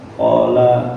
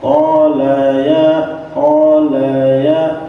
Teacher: qala lanya kan pendek tu qala kemudian Laisa qola qa jangan diberi kesempatan sedikit pun untuk panjang kalau kita bacanya qol Ya qol ya Q ini sudah panjang